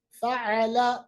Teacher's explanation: عین کے ساتھ ادا کیجئے گا، یہ وسط حلق یعنی درمیانی حلق سے ادا ہوتا ہے